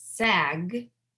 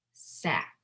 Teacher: so the minimal pairs are for /G/ and /K/ because /G/ is voiced /K/ is unvoiced and they are sister sounds